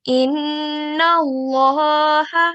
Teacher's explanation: It's Nun Mushaddad, so it's Ghunnah, which will be prolonged for 2 seconds with nasal sound like this.